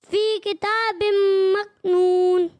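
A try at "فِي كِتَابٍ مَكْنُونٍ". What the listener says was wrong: اچھی کوشش کی، لیکن مزید بہتری کی کوشش جاری رکھیں.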